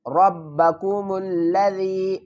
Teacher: یا ساکن ہے، اس سے پہلے زیر ہے تو اس کو 1 الف کی مقدار کھینچ کر پڑھیں گے